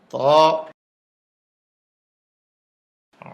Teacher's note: জিহ্বার আগা উপরের দাঁতের গোড়ায় ভিতর দিয়া ধাক্কা দিয়ে মুখ খুলে দিবে।